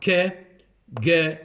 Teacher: the back of the tongue touches the soft palate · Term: velar